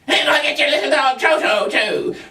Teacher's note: The strident voice is one of those things that is going to come across as high-pitched usually, and typically it has a piercing sound that sort of goes right through you.